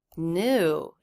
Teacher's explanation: New. It has the up-down shape. That is a stressed syllable. That's new.